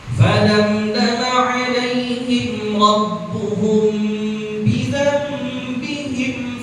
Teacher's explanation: ada iqlab nun mati bertemu dengan ba makanya ditahan ya